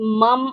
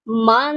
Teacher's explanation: ایسا نہیں ہے کہ میم پر 2 زبر ہو تو آواز مم آئے، بلکہ لاسٹ میں آواز نون کی آئے گی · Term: تنوین